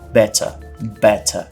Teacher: Então, eu vou pronunciar better, better. Percebe que o T, além de ser assoprado, que são essas consoantes explosivas que a gente já falou, ele é um T forte, ele é um T claramente um T, enquanto que no americano vai ser um som quase que de R, então better, better.